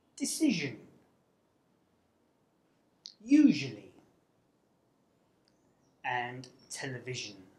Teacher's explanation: a Sibilant, which is a sound made by directing a stream of air with the tongue towards the sharp edge of the teeth · This means that you create friction through clenched teeth by directing airflow through a narrow channel formed along the middle of the tongue. The zh sound is made through the mouth and is voiced, which means that you vibrate your vocal cords to make the sound. · The /ʒ/ is a sound from the ‘Consonants Pairs’ group and it is called the ‘Voiced palato-alveolar sibilant’.